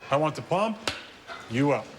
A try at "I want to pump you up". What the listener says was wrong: No. We want to pump you up like that. You put the emphasis on the wrong syllable.